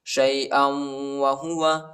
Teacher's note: حمزہ کو واو کے ساتھ ملائیں گے اور غنہ بھی کریں گے